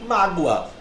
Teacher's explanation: Perceba que a palavra mágoa tem como a sílaba tônica o má, que é uma paroxítona. E ela terminou nesse ditongo.